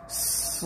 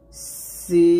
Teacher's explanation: এখানে সদ এবং সিনের মাখাজ যদিও এক তবে এখানে সদটা মোটা হবে। সদ কি হবে? মোটা হবে।